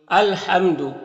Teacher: میم ساکن کے بعد با اور میم کے علاوہ حرف ہے تو میم میں اظہار شفوی ہوگا، میم کو ظاہر کر کے جلد پڑھیں گے